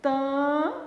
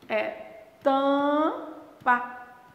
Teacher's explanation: Em tampa, gente, esse M não está sendo pronunciado.